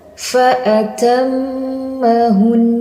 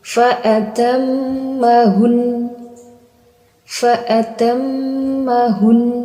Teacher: dengan disukunkan huruf nun, kemudian baru didengungkan. Jadi membacanya fa'atammahun. · Itu cuma berakhir di sukun. Harusnya berakhir di dengung